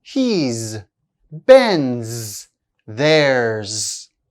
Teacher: Regarding is and has, most of the time their contraction is pronounced z